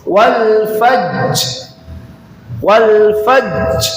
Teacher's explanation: Jadi jimnya di sukunkan dan dia qalqalah kubra. Wal faj bukan wal fajr bukan.